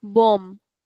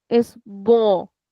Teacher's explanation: So we are tempted to read this word like bomb, but it's not bomb, it's bon. So the mouth remains open. We don't close our mouth to say ma at the end. It remains open and it gives a nasal sound, which we call an open nasal sound.